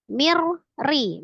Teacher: Mirri nun sukun ketemu dengan ra idgham bila gunnah. Ditasdidkan saja ke huruf ra, tawassutkan huruf ra-nya tapi dengan tidak didengungkan ya. Ri kasra ra kasra tipis.